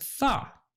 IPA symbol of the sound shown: θ